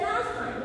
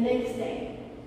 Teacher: Last time it should be like one word and you drop the t in the middle.